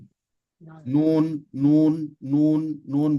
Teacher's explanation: makhraj huruf ee Nun dengan makhraj huruf halqi itu cukup jauh kalau Nun dia berada di ujung lidah ke bagian gusi Nun Nun Nun Nun berarti dia ujung lidah sedangkan huruf halqi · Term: huruf nun